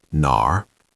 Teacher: Third tone, dip down and up, nar. It has that R pirate sound at the end, nar.